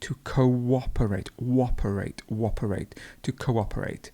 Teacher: Notice that you have this w sound in the middle.